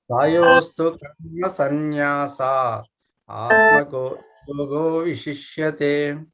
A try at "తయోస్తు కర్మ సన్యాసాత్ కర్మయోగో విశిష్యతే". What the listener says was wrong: తయోస్తు కర్మ సన్యాసాత్ కర్మయోగో విశిష్యతే. తహ ఆత్మ లేదు, సన్యాసాత్ అంతే.